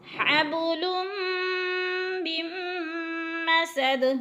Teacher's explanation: دو پیش تنوین کے بعد میم مشدد ہے تو ادغام ہوگا، سختی سے جمع کر پڑھیں گے، ملا کر پڑھیں گے. حبل من مسد، میم نون ساکن، پہلے میم مشدد ہو پھر درمیان میں نون ساکن، اگر پھر میم مشدد آ جائے تو درمیان والی نون ساکن کو نہیں پڑھیں گے بلکہ میم کو میم کے ساتھ ملا کر ادغام کریں گے.